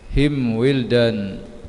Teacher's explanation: izhar syafawi dibaca dengan terang yang kebibiran